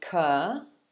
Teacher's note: But actually, it's pronounced like this, colonel, colonel. So it's 2 syllables, and the first one is cur, and the second is null